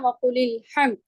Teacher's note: جب میں نے پڑھا وَقُلِ الْحَمْدُ تو میں نے اس والے حمزہ کو نہیں پڑھا کیونکہ یہ حمزۃ الوصل ہے